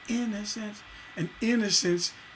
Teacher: a downbeat with two unstressed syllables after it